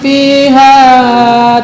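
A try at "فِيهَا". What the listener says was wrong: bukan pi tapi fi.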